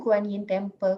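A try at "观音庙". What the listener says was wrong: Goddess of Mercy Temple is in English, but in Chinese we call it as a Kuan Yin Temple, but the real pronunciation is the right pronunciation is Guan Yin Temple.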